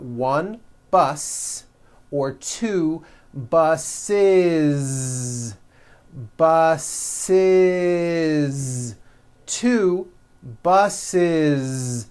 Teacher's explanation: the last sound you hear is that voiced zee